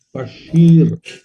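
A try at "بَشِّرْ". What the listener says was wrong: Nggak panjang, Pak. Bashir.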